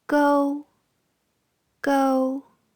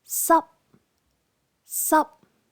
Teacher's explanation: Tones 1 and 7, high-pitched.